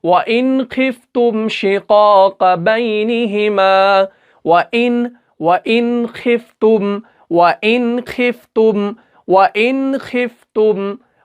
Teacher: नून को हमें जाहिर करना है, बगैर गुन्ना के अदा करना है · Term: इजहार